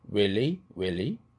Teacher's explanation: he가 h 사운드 흐가 날아가니까 어떻게 돼요? 모음만 남게 되죠. 그렇게 되면 앞에 있는 자음을 끌어당겨야죠. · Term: 링킹